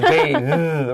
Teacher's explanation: So we have bathing with a long A, and the TH is the voiced TH